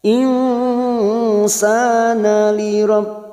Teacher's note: Maka kita samarkan bunyi nun sukun. Kita samarkan 2 atau 3 harokat. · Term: ikhfa hakiki